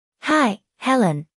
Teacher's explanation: the I sound in hi is extended to show that is very pleased to see Helen.